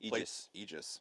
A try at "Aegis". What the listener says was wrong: The A is silent.